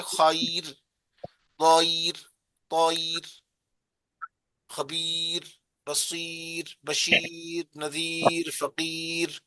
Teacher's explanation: اگر را ساکن سے پہلے یا ساکن ہو، وقف کی حالت میں اس را کو باریک پڑھیں گے